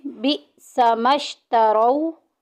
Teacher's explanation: या वाउलीन हो रहा है, नरमी से अदा करेंगे बगैर खींचे बगैर झटका दिए